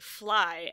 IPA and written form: flai (fly)